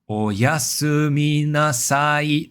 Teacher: the pitch stays high for the entire second duration of the word like oyasuminasai, that final e is high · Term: pitch accent